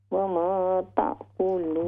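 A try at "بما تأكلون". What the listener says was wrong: बिमा, वमा नहीं है, बिमा। व उनब्बिउकुम बिमा ताकुलून वमा तदख्खिरून फी बुयूतिकुम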